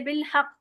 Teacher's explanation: कलकलातुल कुबरा यानी इस पे बहुत ही जोरदार गूंज के साथ कलकला होता है। अलह बहुत ही दबा के अक्सर स्टूडेंट्स ना इसको बहुत लाइटली कर देते हैं।